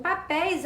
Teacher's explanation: papéis é uma oxítona né já que a última sílaba é tônica terminada em ditongo aberto